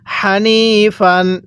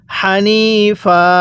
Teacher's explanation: সময় দুই জবরের পরে যদি এরকম একটি খালি আলিফ থাকে তাহলে দুই জবরের মধ্য থেকে একটি জবরকে বাদ দিয়ে আরেকটি জবরে এক আলিফ টেনে পড়তে হবে